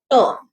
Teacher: यहाँ पे voiceless है, कोई vibration नहीं है. The tip of the tongue blocks the air at the both ridge, tooth ridge, which is alveolar, and it's released as a burst